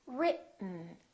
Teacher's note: when we have a t followed by an N the t is held so so we hold our tongue right here behind our upper teeth and we don't release it we smoothly just go directly to the n Sound without moving · this e kind of disappears it's not pronounced so it's basically the T and the N that are next to each other written keep your tongue up don't release it let the air